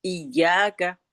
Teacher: इका इका नहीं होता उसप तशदीद लगी होती है तो उसको हम थोड़ा सख्ती से पढ़ते हैं।